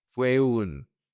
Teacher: You connect these three vowels, the U, the E, and the U.